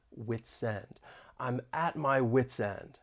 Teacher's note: link the final consonant sound in wits with the beginning vowel sound in N, wit's end